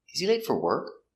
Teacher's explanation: For is not stressed, so we pronounce it fur, fur. Not for, but fur.